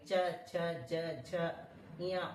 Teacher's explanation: च ज ञ ऊपर तालु में लगता है · और च वर्ग जितने भी बोलोगे ऊपर तालु में लगेगा। च छ ज झ, यहाँ ऊपर तालु में लगता है।